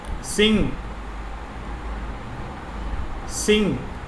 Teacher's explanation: The air comes out of nose. Then nasal n is produced. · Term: nasal na